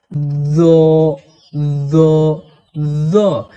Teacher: এই জ হরফের মাখরাজ হলো জিহুবার আগা এবং সামনের উপরের দুই দাঁতের আগা একসঙ্গে লাগিয়ে জ হরফকে মোটা করে পড়তে হয়